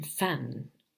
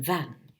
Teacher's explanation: the lower lip articulates with the upper teeth then we are in front of the labiodental sound